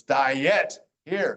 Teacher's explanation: A lot of times, IE just says I, but there are times like right here in diet, even though it's die here, it's diet here. So the I and the E are separate sounds.